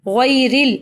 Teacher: غیر را کو زیر کی وجہ سے باریک پڑھیں گے.